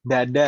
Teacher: Kalau terlalu belakang nanti jadi d. Seperti di bahasa kita dada itu ya. Itu terlalu belakang lidahnya.